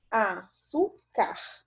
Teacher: a penúltima sílaba é a mais forte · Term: paroxítona